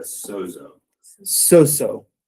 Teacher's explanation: You can say that they merge, but actually that voiced sound from the zeta drops out, and you just get the sigma right here.